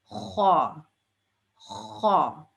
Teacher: یہ جو ہے نا یہ کرکری آواز ہوتی ہے یعنی اسکریچی